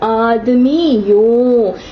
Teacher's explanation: You will see the sound slowly transitioning into the Y sound.